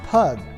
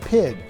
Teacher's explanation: the time of the saxons pygg would be pronounced pug but as the pronunciation of y changed from u to i pug eventually came to be pronounced like pig